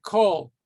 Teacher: Sometimes this vowel, instead of the ah, is going to be pronounced more like an o. For example, the word kol, all, that's pronounced as an o. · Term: kamatz katan